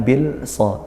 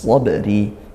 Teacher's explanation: yang kita dengar seperti langsung ke huruf Shad tanpa di tengah-tengahnya padahal ada huruf lam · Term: idgham Syamsiyah